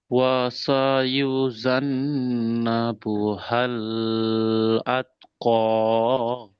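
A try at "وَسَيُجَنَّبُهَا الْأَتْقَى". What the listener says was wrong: বুহাল বলে ধরে থাকবেন না, ওয়াসায়ুজান্নাবুহাল আতকা।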